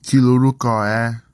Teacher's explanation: the nasal sound becomes a l sound when ni contracts to the following word, and the r sound is lost